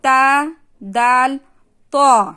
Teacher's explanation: سامنے کے دانتوں کی جڑ کو لگنے سے یہ 3 حرف ادا ہوتے ہیں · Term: حرف نتائیہ